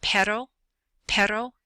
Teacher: the the single R is pronounced sort of like a d you just tap your tongue up the tip of your tongue up at the top of the roof of your mouth behind your teeth